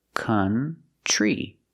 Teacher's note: the TR makes a chch sound like chicken plus the r